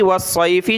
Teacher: صاد کو موٹا کرنا ہے، پلس میں تشدید ہے تو موٹا بھی سخت بھی کریں گے